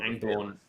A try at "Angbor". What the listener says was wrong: Not Angborn. There's no N at the end.